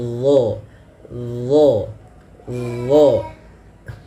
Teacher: huruf d ini harus ditebalkan pangkal lidah kita naik